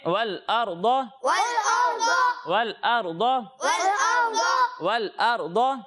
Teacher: اچھا پیارے بچوں, یہاں پر را ساکن ہے, اور جب بھی را ساکن سے پہلے زبر ہو تو را کو موٹا پڑھتے ہیں